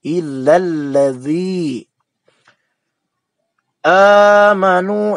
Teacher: Kemudian dzi mad tabi'i, ya, sebelumnya berharakat kasroh. Ingat, dalam pelafalan dza itu ujung gigi yang atas dengan ujung lidah